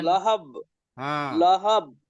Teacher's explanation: লাস্টে বাকে কলকলা করতে হবে